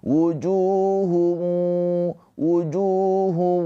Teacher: ketika masuk ke wau dengung keluar suara dari hidung ditahan dua harakat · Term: idgham bighunah